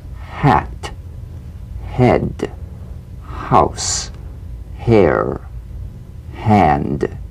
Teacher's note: Unvoiced, glottal consonant. Like a whisper of wind, the H hints at the vowel to come. Sigh in a whisper while the lips take the form of the sound that follows. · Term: gentle H